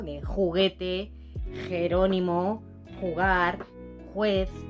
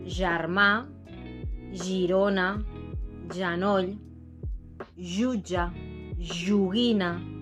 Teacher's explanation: Uno es un sonido sordo en español y el otro es un sonido sonoro. Las cuerdas vocales vibran.